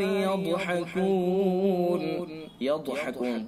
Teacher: يضحكون ضاد حروف مستعلیہ میں سے لہذا ضاد کو پر پڑھیں گے